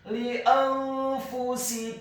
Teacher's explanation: hukum bacaannya adalah ikhfa, dibaca secara samar-samar. Kemudian huruf fa-nya dibaca dhammah 1 harokat.